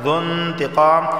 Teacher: نون ساکن کے بعد تا آیا ہے اور تا حروف اخفا میں سے ہے، اخفا والا غنہ ہوگا، یعنی زبان کے نوک اوپر کے تالو سے نہیں لگے گی۔